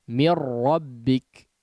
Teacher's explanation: Nun sukunnya betul-betul langsung melebur kepada huruf ra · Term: idgham bilagunnah